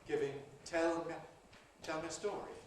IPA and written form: ˈtel mjə ˈstɔːri (Tell me a story)